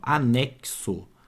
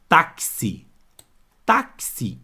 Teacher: Então esse X tem som de cs outra palavra táxi táxi esse X tem som do que de CS x com dois sons